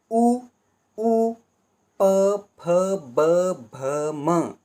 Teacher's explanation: ओष्ठ स्थान है। इन सब का उच्चारण होगा वो ओष्ठ से होगा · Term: प वर्गीय वर्ण